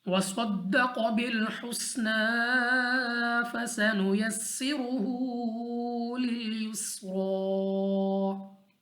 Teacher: स्वाद मुस्तालिया में से मोटा पढ़ेंगे, कौफ मुस्तालिया में से मोटा पढ़ेंगे, हा को अपने मखरज से अदा करना है, नून को फिर खींच कर पढ़ेंगे, खड़ी ज़बर हमारे पास वक्फ में तब्दील नहीं होगी, और सीन को सख्ती के साथ पढ़े जाने वाला हरूफ है, तो इसको सख्ती के साथ पढ़ेंगे, यानी सीटी वाली आवाज़ के साथ